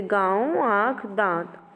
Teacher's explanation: अनुनासिक ऐसे स्वरों का उच्चारण नाक और मुंह से होता है।